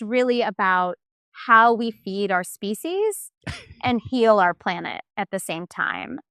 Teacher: the uptalk and the vocal fry at the same time